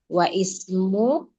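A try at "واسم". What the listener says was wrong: ini Hamzah wasal bacanya wasmu.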